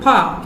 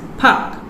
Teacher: For instance, the word park in standard English would be pronounced as park in Singaporean English, where the word has been simplified with the deletion of R